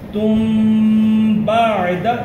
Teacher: یہ جب میم کے بعد با آتا ہے نا تو یہاں پہ دیر لگاتے ہیں